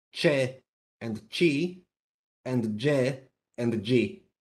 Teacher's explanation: if it's followed by E or I, they become affricates, so they are pronounced CHE and CHI and JE and G.